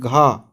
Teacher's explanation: घा कंठ से आवाज आ रही है